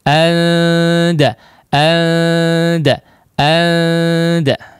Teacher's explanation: Jadi makhraj huruf nun atau huruf huruf-huruf yang akrab ini ya, ta, dal dan juga ta, ketika diikhfakan dijauhkan antara kedua sisi makhrajnya, yaitu ujung lidah ya ditempelkan kepada yang seharusnya ditempelkan kepada gusi gigi atas ya, gusi gigi seri atas, tapi ini dijauhkan sehingga nun sukunnya pun menjadi sangat samar · si lidahnya dia flat saja ya, datar ya, atau cukup jauh ya, cukup jauh tidak mendekat kepada makhrajnya